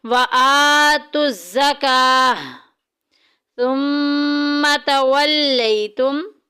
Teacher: सुम्मा में मीम मुशद्दिद आ गई, गुन्ना करेंगे, नाक में आवाज़ लेके जाएंगे